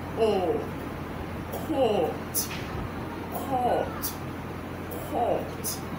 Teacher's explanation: the rounded O sound, and it's a long one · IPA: /ɔ:/